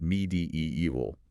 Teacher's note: stressing the third syllable and maintaining that long e sound in the middle